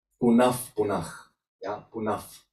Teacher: when Visarga is followed by P or P, they change into the F sound